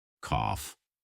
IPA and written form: kɔːf (cough)